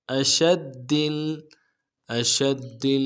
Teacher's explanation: حمزہ کو نرم سے ادا کریں گے، شین کو واضح کریں گے، تفشی ہے ، اور دال کے ساتھ ملانا ہے، دال کے اوپر تشدید